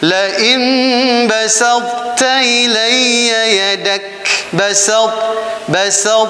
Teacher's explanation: ada sifat huruf isti'lanya dimunculkan tanpa diqalqalahkan